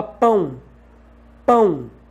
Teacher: o o tem som de u e tá apoiado numa vogal consequentemente o o que tem som de u é uma semivogal · Quando você fala pão, pão, tem som de U. Tanto que se você, na escrita, substituir o O pelo U, o som vai ser exatamente o mesmo.